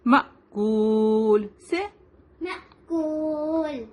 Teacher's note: تو یہ الف کے اوپر جزم ہے، ٹھیک ہے. تو جہاں پر الف کے اوپر جزم ہوتا ہے اس کو ہم جرکنگ ساؤنڈ کے ساتھ پڑھیں گے